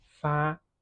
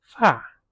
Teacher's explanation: This character is pronounced fa or fa and has different meanings. If it's pronounced with the first tone, fa, it means to send. If it's pronounced with the fourth tone, fa, it means hair.